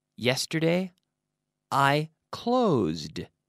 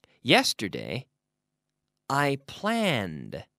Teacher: you have to force that D sound in but it's not an extra syllable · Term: hard D sound